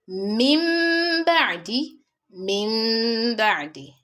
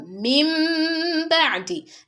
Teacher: in min ba'di, I pronounced M sound, but then there was a narrow opening which led to the pronunciation of gunna.